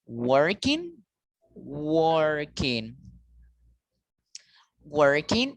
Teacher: and the word working the first syllable is stronger this is called the stressed syllable